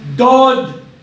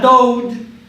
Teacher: Dod, not dode. We don't have dode. There's no OW sound. It's O. So it's dod.